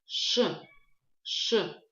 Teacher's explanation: Мы произносим, образовываем этот звук от буквы Ш путем округления губ. При этом во время произношения звука Ш кончик языка касается внутренней стороны передних, нижних зубов.